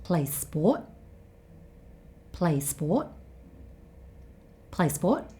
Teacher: he stops himself just before he makes the t sound in sport.